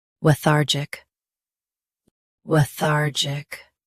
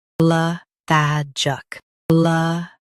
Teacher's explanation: US has thar. UK has shorter tha.